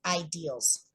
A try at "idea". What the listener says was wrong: Ideal, idea, idea, idea, idea. No L, IDEA, idea, idea.